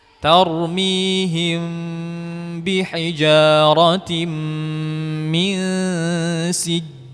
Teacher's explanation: mim mati ketemu ba, hukumnya ikhfa syafawi, yaitu dengan mengikhfakan mim dan memanjangkan gunnahnya. Di sini kita merapatkan bibir, ya, tidak direnggangkan.